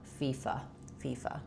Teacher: And then letter A says the or schwa vowel. It's reduced and short. So long on your fee and short on your fa.